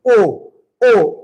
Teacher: ओ ओ ओ के लिए हमें कंठ और ओठ का प्रयोग करना पड़ता है